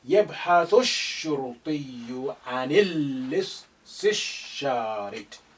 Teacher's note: Lam is silent because you have sun letter after the lam of al.